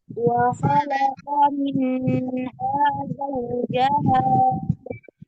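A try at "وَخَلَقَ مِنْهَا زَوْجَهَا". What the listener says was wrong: Coba diulang lagi, jangan ditahan ya, jangan didengungkan. Nah, dia dibaca izhar. Izhar ini artinya jelas ya, tidak dipanjangkan ya. Wa khalaqa minha zawjaha. Minha hanya cukup dialirkan ya. Karena ada sifat tawassutnya ini.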